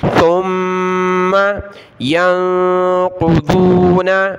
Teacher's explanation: تا پر زبان نکالے، میم پر غنہ ہوگا